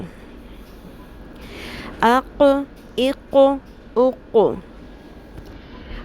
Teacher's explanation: 2 نقطوں والی قاف ہے جس کو ہم نے پر بھی کرنا ہے اور قلقلہ بھی کرنا ہے